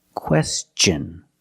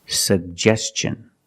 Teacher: When T-I-O-N is after an S, then it's pronounced differently. It's pronounced with the ch sound, the hard ch sound like chicken and change.